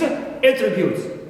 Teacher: I shift my stress from first syllable to the second one